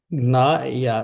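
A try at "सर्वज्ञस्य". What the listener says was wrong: No, not gya, gnya.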